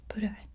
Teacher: bit of a roll there, and a long O sound